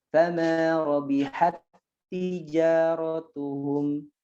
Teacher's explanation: Tak sukun bertemu dengan tak berharokat. Maka bacanya diapakan? Idgham, dimasukkan menjadi satu. Ya, jadi satu bacanya.